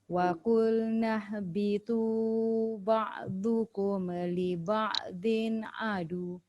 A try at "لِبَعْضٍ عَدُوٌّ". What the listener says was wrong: Tolak sikit sebab dia ada sabdu tu, dia ada tekanan. Liba'dhin adu. Dia bukan adu saja. Adu. Tolak ke depan. Macam kita sebut W tu kan. Liba'dhin adu.